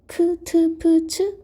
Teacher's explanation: 그 다음에 다시 각각의 파열음, 파차름, 마차름을 소리의 세기에 따라 특별히 힘을 주지 않고 내는 소리, 예사 소리, 짜내는 소리, 끄, 뜨, 뿌, 스, 쯔 하는 된 소리, 긁어서 내는 크, 트, 프, 츠 거센 소리